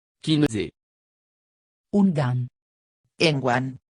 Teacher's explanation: La prononciation nasale, on, en, caractéristique du français n'existe pas en occitan.